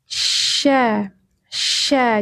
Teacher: sya tengah lidah menyentuh langit-langit. Sifatnya attafasiyi. Menyebar menyebarnya angin dari rongga mulut